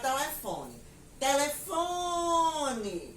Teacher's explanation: demorei mais na sílaba FO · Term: sílaba tônica